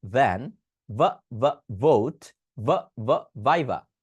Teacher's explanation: সো দেখেন এটাকে practice করতে হবে মানে উচ্চারণ স্থলটা ঠিক রাখবেন উপরের দাঁত নিচের ঠোঁট আর গলায় কাঁপনি